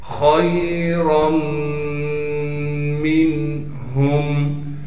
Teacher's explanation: خا کو موٹا کر کے پڑھیں گے، پھر خا کو آگے یا ساکن سے ملا دیں گے۔